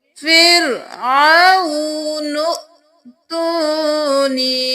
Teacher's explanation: ہم نون کے ساتھ حمزہ کو ملائیں گے، الف کو نہیں پڑھیں گے، جو حمزہ کے اوپر جزم ہے تو جھٹکا بھی دیں گے